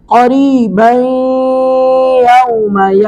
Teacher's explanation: کے بعد یا آ گئی، یا حروف ادغام میں سے، تو یہاں پہ ادغام با گنہ کریں گے، یعنی ناک میں آواز بھی جائے گی، ادغام بھی ہوگا،